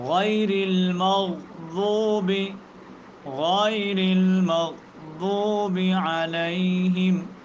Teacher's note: جب زبان کی کروٹ ان داڑھوں کی جڑ کہ دائیں طرف یا بائیں طرف جا کر کے کسی جگہ پر ٹکرائے تو وہاں پر لفظ ضاد ادا ہوتا ہے، لفظ ضاد، ضاد، جس طرح غیر المغضوب، غیر المغضوب علیہم، تو یہ ہے ضاد کا مخرج۔